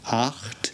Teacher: here we have our CH sound, this time it's at the back of our throats